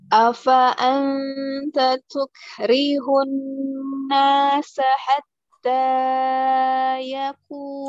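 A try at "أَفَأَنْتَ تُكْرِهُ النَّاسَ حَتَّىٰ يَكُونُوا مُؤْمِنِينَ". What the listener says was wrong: Dua harokat saja Ustaz. Hatta ya langsung.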